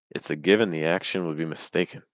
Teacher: Let's stress the word given and then mistaken. We're going to stress those 2 words. So that's where our pitch is going to rest.